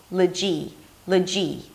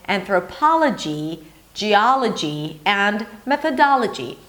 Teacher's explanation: the suffix '-logy', is an 'l' sound and then a schwa